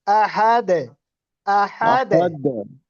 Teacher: দালের কলকলাটা একটু নিচের দিকে যাবে